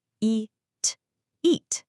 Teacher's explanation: the long e sound paired with that hard t stop